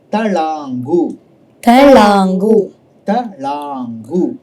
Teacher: talangu, So when you say la, it is a retroflex action. La. You have to roll your tongue up and hit it hard.